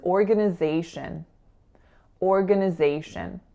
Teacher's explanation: So schwa on that second and third syllable, and then our winner, and then a final schwa.